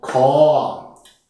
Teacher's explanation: Kor im mittleren Ton ausgesprochen.